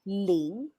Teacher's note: L-I-N-G, that is ling, but we are using the second intonation. Remember, that is like asking.